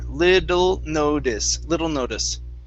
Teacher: we're going to use the flap t here